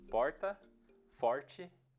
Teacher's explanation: a pronúncia do L teria virado um R meio embolado, que a linguística chama de retroflexo